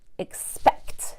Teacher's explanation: I'm gonna have to use the back of my tongue for the K and then quickly switch to the front of my tongue for the T